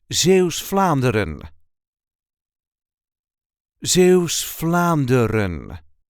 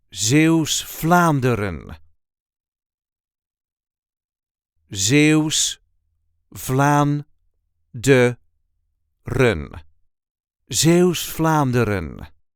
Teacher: There is a light emphasis on the first syllable of the second word